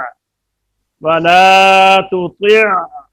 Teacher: تطع بند بھی نہیں ہے، اور تطع لمبا کر کے اس کو جاری بھی نہیں کریں گے، تو عین میں آواز اگر بند کرتے تو اس نے حمزہ بن جانا، اور اگر اس کو جاری رکھتے تو اس نے الف بن جانا، یعنی یہ تین حروف ہیں جو مشابہت الصوت ہیں، ایک حمزہ، ایک عین اور ایک الف۔ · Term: توسط